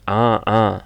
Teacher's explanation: Itu keluar dari tengah kalau laki-laki dari jakun